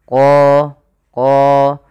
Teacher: Pada lafal qalu ud'u lana, pada lafal qalu di sini ada hukum tajwid berupa bacaan mad tabi'i, yaitu pada lafal qa yang dimana huruf qa ini harus kita tebalkan qa karena dia punya sifat huruf isti'la